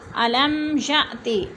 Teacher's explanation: अलम मीम साकिन के बाद या गया तो इजहार शफ़ी हो रहा है, गुन्ना नहीं करेंगे।